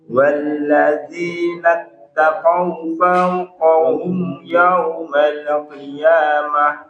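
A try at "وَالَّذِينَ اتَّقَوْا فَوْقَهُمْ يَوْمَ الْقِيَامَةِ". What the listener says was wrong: Huruf lam ingat jangan dikolkolah. Yaumal qiyamah. Yaumal qiyamah.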